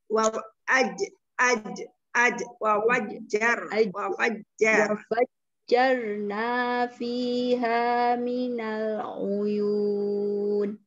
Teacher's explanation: jim tengah lidah menyentuh langit